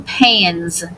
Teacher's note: If suffix S follows a voiced consonant, the S is voiced as in pans. Z. Sounds of suffix S.